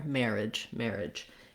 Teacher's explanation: just make sure that you have a nice pushed out j at the end there